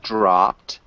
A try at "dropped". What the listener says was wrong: nice